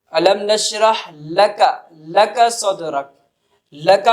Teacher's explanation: اسی طرح لام کی مثال، الم نشرح لک صدرک، لکا پڑھ رہے ہیں تو لا کے وقت کہ زبان کی نوک اوپر کے تالو سے لگ رہی ہے